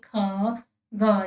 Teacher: जब हम इनका उच्चारण कर रहे तो एक तरह से कंठ से आवाज आ रही है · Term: नवीन विकसित ध्वनियां